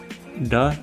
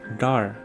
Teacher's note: now we have got a retroflex D sound